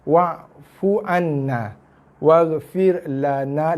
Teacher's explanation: la satu harakat, na 2 harakat